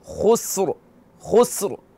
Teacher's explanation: ٹھیک ہے نا، خا موٹا پڑھا جائے گا کیونکہ خا حروف استعلاء میں سے ہے. سین کو باریک پڑھیں گے، پھر را کو پھر موٹا پڑھیں گے